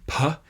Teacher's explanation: it's like a p with a little puff of air right after it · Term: aspirated p, aspirated P